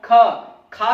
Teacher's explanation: जब आप बोलेंगे तो देखिएगा एक झटका सा लगता है, वायु का एक थपेड़ सा लगता है आपके हाथ पे। वो महसूस होता है कि हाँ आपके मुख से उच्चारण के आधार पर वायु अधिक मात्रा में निकल रही है। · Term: महाप्राण